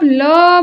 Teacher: वायु जिह्वा के दोनों ओर से बाहर निकलती है। जब भी आप ल बोलेंगे तो आपको लगेगा कि ये मान लीजिए आपकी जीभ है, तो जो वायु है इधर से भी निकलती है और इधर से भी निकलती है।